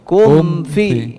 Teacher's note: Jadi jangan terputus bunyi mim sukunya dengan huruf setelahnya. Kum fi, apalagi nanti dipantulkan begitu.